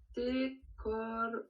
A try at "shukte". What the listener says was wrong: Shukte, si tu t'arrêtes à te, shukte.